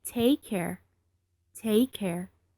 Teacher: take ends with Kay and care starts with a c and it sounds like Kay you don't say take care you say it together